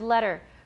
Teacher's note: there's no T sound in this word at all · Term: tap